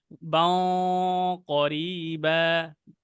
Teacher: বাও, আমাদের গুন্নাটা মোটা করে ফেলতে হবে